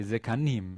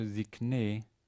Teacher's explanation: The important part there is the fact that the mim disappears. The im ending becomes e. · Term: construct state